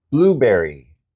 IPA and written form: ˈbluːˌbɛr.i (blueberry)